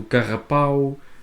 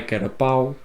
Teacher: o R mais fraquinho, quando devia de ser um R pequeno, eles põem um R grande, o carrapau, não é carapau, e vários outros exemplos que eles têm.